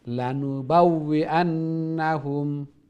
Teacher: লাম ওইটা শর্ট, লা বললে লং হয়ে যাবে